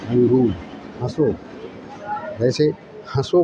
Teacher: نقطہ نہیں ہوگا، اور آواز ناک سے نکلے گی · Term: ننگنا